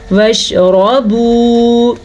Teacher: را کو پور پڑھیں گے، را پہ زبر کی وجہ سے، اور آگے ہمارے پاس ہے واو مدہ تو واو مدہ بھی ادا کرنا ضروری ہے.